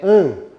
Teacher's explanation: naquele ditongo eu tenho o som nasal, não é A, é AN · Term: ditongo decrescente nasal